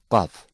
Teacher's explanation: Kaf is articulated when the extreme back of the tongue touches the back part of the palate.